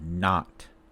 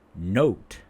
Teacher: We're not rounding our lips here, but we say note. The O. We are rounding our lips.